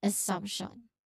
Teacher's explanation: So letter M is a nasal sound followed by p, partially blocked.